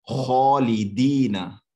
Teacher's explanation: खौ जो है वो मोटी आवाज के साथ पढ़ा जाएगा, भारी आवाज के साथ पढ़ा जाएगा, उसे मुंह को भर के पढ़ना है। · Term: फुल माउथ